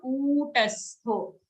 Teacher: don't make the ku short, it's a dirgha sound